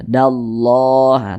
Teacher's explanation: sebelumnya ada huruf yang memiliki tanda baca fathah maka lafaz Allah kita baca tebal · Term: dibaca tebal